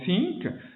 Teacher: Ça, c'est une lettre qui est particulière en langue arabe, qui existe aussi en anglais dans le mot think. C'est le bout de la langue qui est pincé un peu entre les dents en avant.